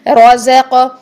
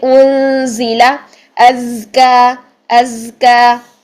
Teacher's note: زا میں سیٹی بھی ہونی چاہیے اور آواز بھی جاری ہونی چاہیے